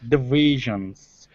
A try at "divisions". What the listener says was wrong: It's not bad. I guess it's a little bit, you're doing it a little bit heavier than you should. Instead of saying divisions, where your lip is covering your teeth, what you have to do, let me just share my screen.